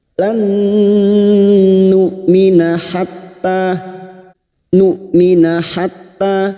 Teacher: Memasukkan dengan mendengung. Masuk pada huruf nun dan mendengung selama 3 harokat. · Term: idgham bi gunnah